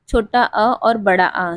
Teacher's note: कंठ स्वर छोटा अ और बड़ा आ जो सिर्फ कंठ से बोले जाते हैं।